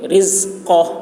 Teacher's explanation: زا کی آواز سخت ہوگی، قاف کی آواز موٹی ہوگی